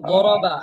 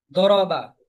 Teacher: দদ আর দালের উচ্চারণ কাছাকাছি তো দদের উচ্চারণটা একটু মোটা হয় আর দাল চিকন হয়